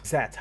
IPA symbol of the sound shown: ð